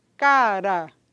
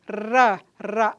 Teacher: vibrante alveolar vozeado não é então a gente faz ra ra a língua toca várias vezes a ponta da língua toca várias vezes ou algumas vezes na região do e dos alvéolos